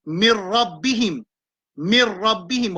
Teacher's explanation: On pas dire noun, on dit ra. C'est un noun avec ra.